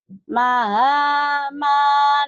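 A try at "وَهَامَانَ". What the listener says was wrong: Waha, bukan maha. Waha, waha. Ma-nya panjang. Ma-nya kan yang berdiri. Wahamana wa qaruna. Wahamana wa qaruna.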